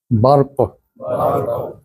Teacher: قاف کو پڑھتے ہوئے وہ لہات اور کوے کو حرکت دینی ہے جو گلے میں لٹک رہا ہے